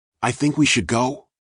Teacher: That rising inflection at the final syllable, soft, hesitant, floating upward like a leaf caught in a breeze, doesn't declare.